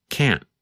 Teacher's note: pronunciation between the positive form can and the negative form can't sometimes you can hear the letter T when we say can't but other times it is harder to hear